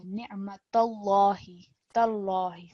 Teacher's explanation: thick lam in lam mushaddad